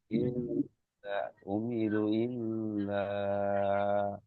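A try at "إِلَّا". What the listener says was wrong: ইল্লা অতটা টান হবে না, ইল্লা এক আলিফ টান হবে, উমিরু এটা তিন আলিফ টান হবে কমসে কম।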